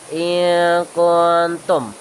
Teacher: nun atau tanwin disamarkan, tidak jelas tapi juga tidak hilang, dan tetap ada dengung 2 harokat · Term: ikhfa